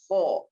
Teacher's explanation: huruf kha itu isti'la, jadi harus tebal